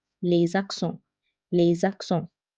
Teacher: When the first word ends with a consonant, second starts with a vowel, we need to join those two sounds and we make a liaison. When S is followed by another word starting with a vowel, it's pronounced as Z.